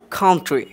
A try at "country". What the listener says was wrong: একটা জিনিস খেয়াল করুন, এখানে বলা হয়েছে কান্ট্রি, আওয়ার কান্ট্রি। তবে এখানে আমরা যে কান্ট্রি বলছি আসলে উচ্চারণটা এমন হবে না। উচ্চারণ হবে কি? ক উচ্চারণ করবো না আমরা, ঠিক আছে? এই উচ্চারণ হবে কান্ট্রি। কী হবে? কান্ট্রি। খাম খাম। কী হবে? খাম, কান্ট্রি।